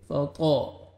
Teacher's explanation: طا کو موٹا کر کے پڑھیں گے